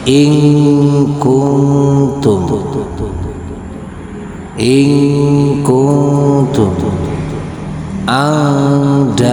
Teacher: Ketika bertemu huruf ikhfa, maka suara nun mati itu menjadi samar.